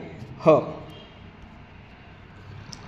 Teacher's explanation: ज्या वर्णाचा उच्चार करताना फुफुसातील हवा तोंडावाटे जोराने बाहेर फेकली जाते त्यास महाप्राण म्हणतात